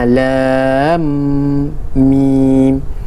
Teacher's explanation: Huruf mim bertanda sukun dibaca secara idgham kepada huruf mim selepasnya. Mim ni dikira baca macam sukun juga.